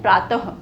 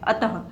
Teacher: ठीक है, प्रातः, प्रातः कैसे लिखा जाता है, प्रातः त लिख दिया, त के पीछे विसर्ग आ गया, और विसर्ग का उच्चारण कैसे हो रहा है, जब हम बोल रहे हैं तो ह का उच्चारण हो रहा है, प्रातः। हम क्या बोलते हैं, प्रातः।